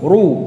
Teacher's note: ketika mengucapkan ra dhammah tebal ya dan mencucu.